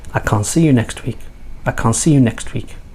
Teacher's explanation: Next week, the T again is dropped. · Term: connected speech